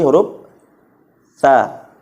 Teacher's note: cara bacanya itu adalah huruf tha. Ujung lidahnya dikeluarkan sedikit. Ujung lidahnya dikeluarkan sedikit.